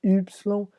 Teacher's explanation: Temos a letra Y, que em alemão é Y, você faz um biquinho no começo, e do resto é bem parecido com o português. Y, bem biquinho mesmo, Y.